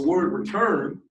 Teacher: So in the word return, the stressed part is turn.